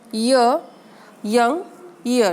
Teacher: Here, active articulator is front of the tongue and the passive articulator is hard palate. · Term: palatal